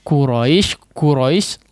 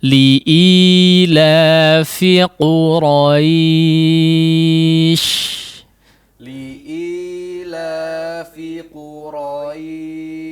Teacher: dia ditempelkan pangkal lidah Nya kepada bagian yang lunak langit-langit yang lunak atau bagian dagingnya sehingga dia terdengar lebih kuat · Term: huruf qaf